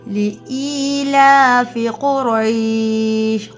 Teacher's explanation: قاف موٹی را بھی موٹی یا لین، یہاں پہ یا مد ہے۔